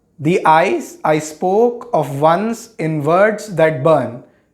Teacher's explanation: So we have 5 iambic feet. So this makes iambic pentameter, thus 10 syllables in a line.